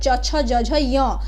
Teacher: वो तालव्य से तालू से बोले जाते हैं